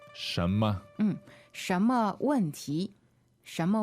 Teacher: the word for what is 什 么 second tone and neutral